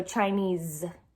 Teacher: It's with the Z sound instead of the S. Even though it has the S on it, you can feel your vocal cords whenever you're saying it. So Chinese, it's actually the Z and your vocal cords are vibrating.